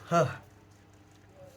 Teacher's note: Lalu ada celah suara glotal. Nah, itu udara melewati celah antara pita suara